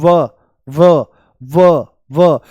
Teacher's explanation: दांत, ये दंत ओष्ठ है, दंत ओष्ठ। दांत और होठ दोनों से इसका उच्चारण होता है। जैसे बोल दो व व व व, तो जो ऊपर वाले दांत हैं ये होठों से मिल जाते हैं।